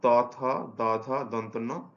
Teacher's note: এরপরের বর্ণেও গুলো হচ্ছে দন্ত বর্ণ, ত, থ, দ, ধ, দন্তন্য। এগুলো দাঁতের সাহায্যে বা দাঁতের যে গোড়ার দিকের অংশের সাহায্যে উৎপন্ন হয় এই বর্ণ ধ্বনিগুলো।